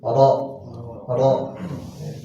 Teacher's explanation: sisi kiri dan kanan lidah itu nempel ke gusi atas